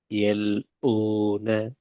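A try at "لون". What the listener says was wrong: எல் ஊ sound வரக்கூடாது. ஊட sound வருது பிள்ளை. ஊ அல்ல வூ. வூ. வூ.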